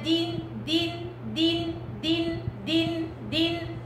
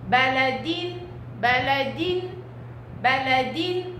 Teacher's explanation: بس انتبهوا إنها ما يطلعش فيها إمالة